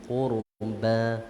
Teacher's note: Nipiskan qurba, senyum qurba, ba tu nipis lah, jangan qurba, tak nak qurba, ba huruf istifal, kita nipiskan saja